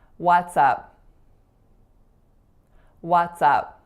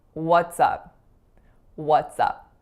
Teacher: I wasn't making the correct vowel sound so I was making an AA sound